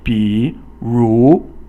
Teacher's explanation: 三 声 is falling, then rising, and then 二 声 or the second tone is a rising tone, quickly rising.